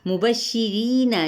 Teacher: ری یا مدہ ہے لیکن را باریک پڑھا جائے گا، ایک الف کے برابر کھینچیں گے